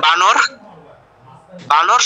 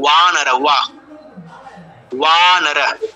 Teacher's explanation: অন্তস্থ বয়ে ঠোঁট লাগে না, ঠোঁট লাগবে না। ওয়া, ওয়া উচ্চারণটা এরকম হয়, ওয়া।